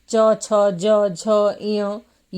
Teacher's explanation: च छ ज झ य य और तालव्य श का उच्चारण तालू भाग से होता है